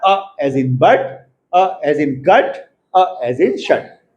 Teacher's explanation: It is a central vowel between half open and open.